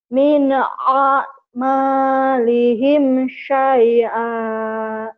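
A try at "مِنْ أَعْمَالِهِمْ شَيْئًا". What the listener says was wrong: Oh, shin-nya udah bisa ya, tinggal dimantepin sama ain.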